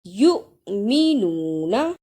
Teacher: جس حمزہ پر جزم ہو اس کو تھوڑا جھٹکا لگا کر پڑھتے ہیں